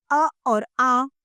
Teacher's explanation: इन स्वरों का उच्चारण गले से होता है, वे कंठ्य स्वर कहलाते हैं।